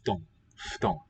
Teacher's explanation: 低い、 What was I going to say? Oh, note how the FU syllable is sounded. It's a F with a two-lip fricative. · the U sort of drops out because the voiceless T follows.